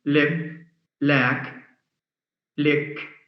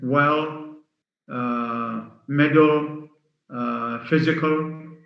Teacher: That means it's pronounced in two ways. One is clear, as in lip, lack, lick. The other is dark, D-A-R-K, dark, as in well, middle, physical. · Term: clear allophone